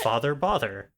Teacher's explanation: So I clearly have the father-bother merger.